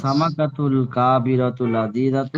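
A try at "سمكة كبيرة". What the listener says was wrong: কাবিরা তো কাফ লম্বা হবেন কেন? সামাকাতুল কাবিরাতু লাযীযাতুন, বড় মাছটি কি সুস্বাদু? আস-সামাকাতুল কাবীরাতু লাযীযাতুন।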